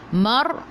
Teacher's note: Mar, ra sebelum ra baris atas kena baca tebal, lidah naik ke atas.